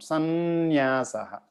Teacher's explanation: so there's an n sound instead of an m sound there's an n nasal sound